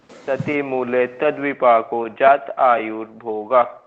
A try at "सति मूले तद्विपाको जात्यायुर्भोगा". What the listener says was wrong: अरे अब जात के बाद तोड़ क्यों रहे इसको, जात्यायुर्भोगा बोलिए ना। जात आयु क्यों बोल रहे हैं आप, जात्या बोलो ना, जात्यायुर्भोगा। जात्यायुर्भोगा। जात्यायुर्भोगा। सती मूले तद्विपाको जात्यायुर्भोगा।